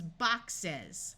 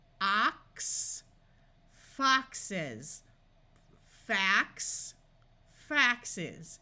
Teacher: When we make it plural, words ending in X, we add an ES to make it plural, and it becomes boxes. Notice the buzzing voice sound of Z here.